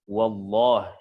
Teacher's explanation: Pada lafaz Allah, lafzul jalalah Allah. Ketika sebelumnya berharokat atas, ya dia dibaca tebal, ya.